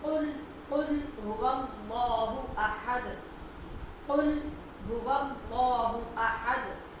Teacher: 2 نقطوں والا جو قاف ہے یہ تالو کے نرم حصے اور زبان کی جڑ سے ادا ہوتا ہے